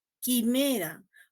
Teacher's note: Yo no produzco la U, quimera, por lo tanto no es un diptongo, ¿no? Yo escribo la U, sí, pero no la produzco.